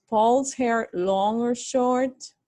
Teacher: the intonation has to rise like this